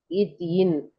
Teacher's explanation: நாவின் நுனி அன்னத்தின் முன்பகுதி